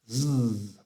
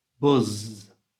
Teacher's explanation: And to make that sound, our mouth shape is the same as last time for the s sound, but this time we send the air from our chest into our voice box. So it becomes a voiced sound.